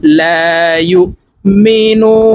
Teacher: ইয়া হামজা পেশ ইউ, লা ইউ, মিম জির মি, নুন ওয়াও পেশ নো, লা ইউ মিনু, নুন জবর না, এই নুনকে ওয়াকফের ক্ষেত্রে সাকিন করে ফেলবো। এখানে নু 3 আলিফ টেনে নুনকে সাকিন করতে হবে, কারণ মদের হরফের বামের হরফে ওয়াকফ হইলে মধ্যে আরজি 3 আলিফ টানিয়া পড়িতে হয়।